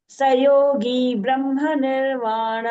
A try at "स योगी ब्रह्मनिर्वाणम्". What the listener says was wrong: Sayogi, that the gi is dirgha. Little bit you can elongate, Baini.